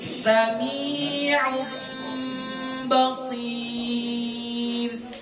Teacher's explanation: Sami'un, dengungnya agak dipanjangkan aja. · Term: iqlab